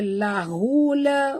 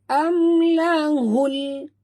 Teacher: Lahul, hul di sini ha simpul, hul di sini alif lam qamariyah ataupun izhar qamari, bacanya terang bunyi lam itu tanpa lantunan. Jangan baca lahula, bukan lahula, tapi bunyi dia lahul, tongkat lidah ke langit.